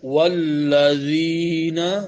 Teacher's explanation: ذال زبان کی نوک اوپر کے سامنے والے 2 دانتوں کے کناروں سے ٹکرے گی۔